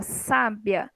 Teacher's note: sábia é uma palavra que eu tenho duas sílabas a penúltima é tônica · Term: paroxítona